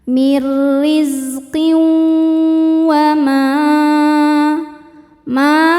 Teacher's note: Sebab ada tanwin kasrah berhadapan dengan huruf wau. Cara bacanya tanwin dimasukkan ke wau kemudian tahan dengungkan. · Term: idgham bighunah, idgham bi gunnah